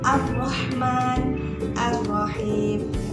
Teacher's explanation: lam tidak terbaca, langsung diidghamkan atau dimasukkan kepada huruf ro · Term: idgham syamsiyah